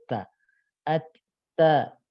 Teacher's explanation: kalau huruf ta itu ujung lidah dengan gusi gigi seri atas. Bahkan dengan pangkal ya, dengan pangkal gusi dan pangkal gigi seri atas.